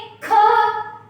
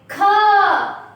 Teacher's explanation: ख उच्चार करने के लिए हमें ज्यादा सांस बाहर डालना पड़ता है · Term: महाप्राण